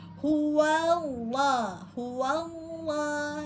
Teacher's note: Karena wa huruf sebelumnya berharakat fathah, maka terjadi tafhim pembacaan tebal pada lafaz Allah